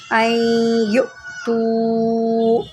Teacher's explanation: یہاں پر حمزہ ساکنہ ہے، اس کو جرک دے کے پڑھیں